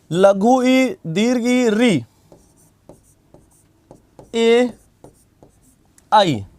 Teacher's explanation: तो लघु ई, दीर्घ ई, री, ए और आई, इनको क्या कहते हैं? ये कहलाते हैं अग्र स्वर, क्योंकि इनके उच्चारण में जीवा की अगली नोक क्रियाशील रहती है, इसलिए अग्र स्वर है।